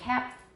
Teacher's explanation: We can go to bed saying cap and breathe through our nose all night, and that final stop will be unreleased